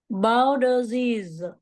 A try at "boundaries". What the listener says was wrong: Rồi, đây là một cái lỗi của giọng địa phương nha cả nhà. Boundary, r. Đúng rồi, boundary chứ phải boundary đâu. Chữ này là chữ r nè.